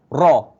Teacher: huruf ra, lidah kita di hujung lelangit, nak dekat gigi dah, tapi tak sampai gigi, ra. Sebab kalau dah sampai gigi tu, dia akan makhraj dal, ta, dal, ta, to di antara gigi. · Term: makhraj ra